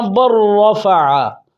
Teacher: لام اور را میں داخل ہوا، لہذا پہلے لام کی کوئی صفت بھی باقی نہیں رہی، لہذا یہ ادغام متقاربین تام کی مثالیں ہیں۔